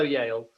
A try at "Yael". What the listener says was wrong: this one is called Yael, not Yale. Like, just say L. L's good. L.